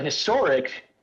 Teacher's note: we do not have a silent h we have a very hard h